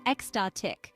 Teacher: The pronunciation is ecstatic, with the stress on the second syllable.